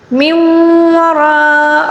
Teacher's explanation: من وراء، را کو پر پڑھیں گے، را کے اوپر زبر ہے، اس کو پر پڑھیں گے، اور مد متصل ہے، اس کو 5 الف کے برابر کھینچ کر پڑھیں گے